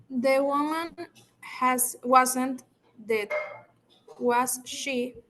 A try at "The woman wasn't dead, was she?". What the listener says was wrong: Remember, when you're reading, you have to lift, you know, the intonation a little bit. So you say, the woman wasn't dead. Was she? You see, you cannot say the woman wasn't dead, was she? You know, like a very plain, very flat, because it doesn't make any sense.